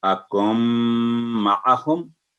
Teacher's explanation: 2 second गुन्ना करेंगे मीम पर, नाक नेजल साउंड, नून नाक में आवाज आएगी, अकुम माअहुम।